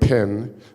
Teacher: say pin, and you will feel an explosion of air.